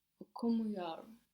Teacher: we're putting the accent just before the m, which here in this case is not the first syllable of the word necessarily